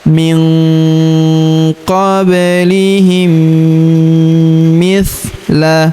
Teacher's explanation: Kemudian huruf mim sukun bertemu huruf mi berharokat tasydid, maka mim sukunnya melebur ke huruf mi, kita tahan dan kita tekan serta kita dengungkan 2-3 harokat